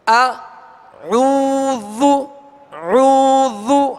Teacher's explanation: یہاں واو مدہ ہے لہذا ایک الف کی مقدار میں کھینچ رہے ہیں،